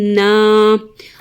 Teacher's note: چھوٹی مد ہے تو کھینچیں گے 3 الف کے برابر